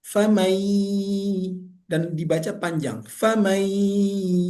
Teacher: bunyi n-nya hilang, bunyi nunnya hilang. Yang ada bunyi huruf ya.